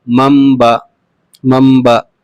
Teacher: تنوین یا نون ساکن کے بعد با آئے تو میم ساکن سے بدل کر غنہ اور اخفا کے ساتھ پڑھیے، اس کو اقلاب کہتے ہیں۔